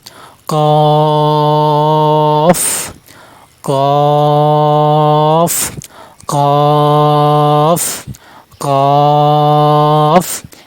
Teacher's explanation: কফ হরফের মাকরাজ জিহ্বার গোড়া, তারপর উপরে তালুর সাথে লেগে উচ্চারণ করবেন।